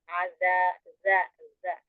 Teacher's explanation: Ujung lidah dan dua ujung gigi seri atas bertemunya. Jadi dua ujung lidah bertemu dengan dua ujung gigi seri atas. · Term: Zal